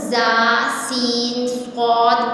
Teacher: ان 3 حروف زا سین صاد کو ادا کرتے وقت سیٹی کی طرح تیز آواز نکلتی ہے، اس لیے ان حروف کو حروف صفیریہ بھی کہتے ہیں.